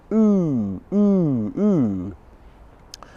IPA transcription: u: